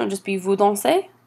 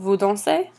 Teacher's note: you just raise your voice at the end the last syllable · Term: intonation